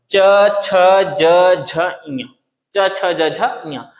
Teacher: जो जीभ है ऊपर वाले तालू में क्या हो जाता है जाके चिपक जाता है और तालू में चिपकता इसलिए इसको बोल देते हैं तालव्य व्यंजन।